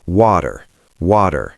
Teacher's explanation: We turn the T into a D, a fast, soft D. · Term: flap T, American flap T